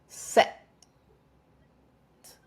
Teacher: notice how my glottis closes at the end of the vowel.